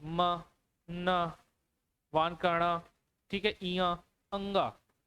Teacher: ये सबको बोलने में क्या है, नाक का थोड़ा सा प्रयोग होता है, नाक से हवाएं निकलती है, तो उसे ही नासिक के व्यंजन कहेंगे।